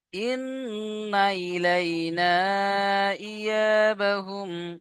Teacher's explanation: নুন আলিফ জবর না, 2 থেকে 3 আলিফ টান হবে, কারণ হুরুফে মাদ এসছে, মাদের পরে হামজা দ্বিতীয় শব্দ এসছে, মাদ্দে মুনফাসিল। ইন্না ইলাইনা ইয়াবাহুম, হামজা জের ই, ইয়া আলিফ জবর ইয়া।